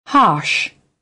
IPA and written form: hɑːʃ (Harsh)